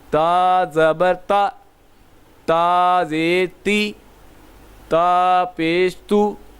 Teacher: اب اس کو ہم نے تا کا جو مخرج پڑھا تھا ہم نے، تا کا مخرج ہم نے پڑھا تھا زبان کی نوک اور اوپر کے دانتوں کی جڑ سے ادا ہوتا ہے۔ تا جو ہے زبان کی نوک اور اوپر کے دانتوں کی جڑ سے ادا ہوتا ہے